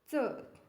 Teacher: तालव्य अल्पप्राण असणारी व्यंजन हे पर्यायांपैकी च आहे